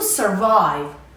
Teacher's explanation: Survive has two syllables and the stress is on the second syllable.